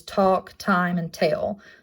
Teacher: it's an alveolar placement it's not voiced and it does show up in words such as talk time and tail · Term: stop consonants